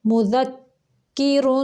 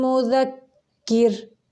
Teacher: را کو ملانے کی صورت میں پر پڑھیں گے اور وقف کی صورت میں باریک پڑھیں گے